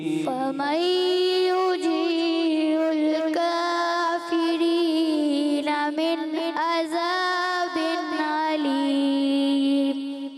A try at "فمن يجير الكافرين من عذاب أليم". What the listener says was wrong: من عذاب, दाल जो है तो जा की तरह महसूस हुआ। फमन युजीरुल काफिरीन मिन अज़ाबिन अलीम।